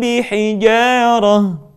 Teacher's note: Mim mati ketika bertemu dengan huruf ba, bibir tidak sempurna rapat melainkan agak direnggangkan sedikit.